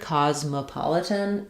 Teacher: cosmopolitan is stressed on the pa syllable. Letter O says the ah sound there, pa-litan.